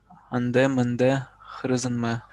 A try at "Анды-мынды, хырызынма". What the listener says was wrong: Во, уже лучше.